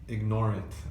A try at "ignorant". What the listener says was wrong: it's just a stress where stress ignore it ignore it you're stressing the last syllable